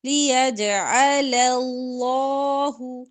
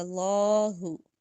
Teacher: لیجعل اللہ ذالک، لام موٹا کریں گے، لفظ اللہ کا لام، لیجعل کا لام باریک ہوگا، اللہ کا لام موٹا ہوگا